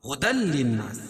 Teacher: تنوین کے بعد ادغام بلا غنہ کے 2 حرفوں میں سے لام ہے تو یہاں ادغام ہوگا لیکن غنہ نہیں ہوگا